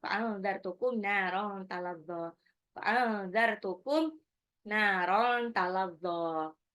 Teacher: nun sukun ketemu zal itu ikfa